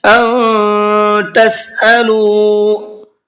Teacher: نون ساکن کے بعد میں اخفا کے حرفوں میں سے کوئی بھی ایک حرف اگر آ جاتا ہے تو وہاں پر نون کی آواز کو تھوڑا سا ناک میں چھپا کر کے پڑھتے ہیں · تسألو کے لام کو کھینچ کر کے پڑھنا ہے اس لیے کہ یہاں پر واو مدہ کا قاعدہ ہے